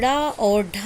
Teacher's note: ड़ा और ढा का उच्चारण स्थान मूर्धा है